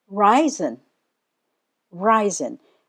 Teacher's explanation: The stress is on the first syllable, Reisen.